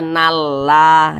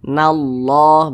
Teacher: ini lafaz Allah sebelumnya ada huruf yang memiliki tanda baca fathah maka lafaz Allah dibaca tafkhim dibaca tebal